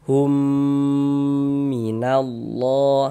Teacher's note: Jadi di bagian humnya itu suaranya itu kita tahan, kita panjangkan saja sepanjang 2 harokat. Kita gunakan hum minallah seperti itu. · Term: idgham mimi